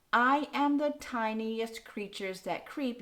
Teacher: So we have a headless foot, which means there are no unstressed beats before this first stressed beat.